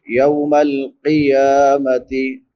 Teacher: قوف حروف مستعلیہ میں سے ہے، موٹے حروف میں سے، تو اس کو موٹا کر کے پڑھیں گے